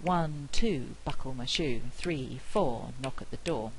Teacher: these things are quite stress timed and we we're squashing syllables in knock at the door to